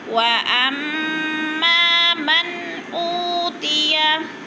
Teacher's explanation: वअम्मा की मीम मुशद्दद सख्ती से पढ़ेंगे और आगे अलिफ है, थोड़ा सा खींच के।